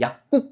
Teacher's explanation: 안울림 소리 뒤에 기역이 쌍기역으로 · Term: 된소리